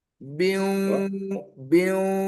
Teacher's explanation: ada dengung antara huruf ba dan waw.